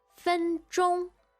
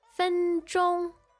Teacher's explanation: high pitch there, that's two first tones in a row